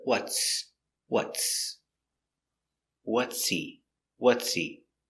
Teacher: The H is silent because the word is not stressed.